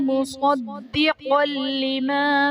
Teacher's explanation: صاد اور قاف حرف مستعلیہ ہیں، پر پڑھے جائیں گے۔ دال حرف قلقلہ مشدد ہے تو یہاں پر قلقلہ خوب جماؤں کے ساتھ ادا کریں گے۔